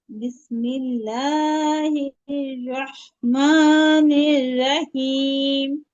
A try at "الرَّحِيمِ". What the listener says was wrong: রাহিম হবে না, র হবে। র এর উপর জবর থাকলে রয় পুর হবে না, পড়ছিলাম আমরা। রহিম।